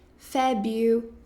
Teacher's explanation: tem a opção de você não pronunciar esse R